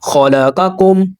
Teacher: یہ خا اور یہ قاف دونوں مستعلیہ حروف میں سے ہیں، ہیوی لیٹر ہیں، دونوں کو پر یعنی موٹا ادا کریں گے۔ یہاں پر قم ایسے نہیں کرنا، غلط ہو جائے گا۔